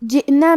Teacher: تنفدہ، کلمت جئنا میں حمزہ پہ جزم ہے، لہذا ہمیں حمزہ کو ظاہر کرنا ہے اور حمزہ کی ادائیگی حلق کے نیچے والے حصے سے ہے